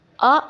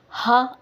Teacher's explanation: ಅ ಅಂದಾಗ ಹೆಚ್ಚಿನ ಗಾಳಿಯನ್ನು ನೀವು ಉಪಯೋಗಿಸುವುದಿಲ್ಲ ಆದರೆ ಹ ಅಂದಾಗ ಖಂಡಿತವಾಗಿಯೂ ಗಾಳಿ ಹೆಚ್ಚಾಗಿ ಬರುತ್ತೆ